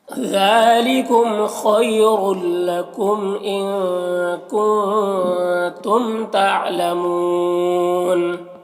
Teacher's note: تنوین کے بعد لام حروف یرملون میں سے تو تنوین کو لام سے مدغم کر کے بغیر غنہ کے پڑھیں گے، اس کو ادغام تام کہتے ہیں۔